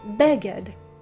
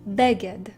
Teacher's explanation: the stress or the accent falls on the first syllable and not on the second.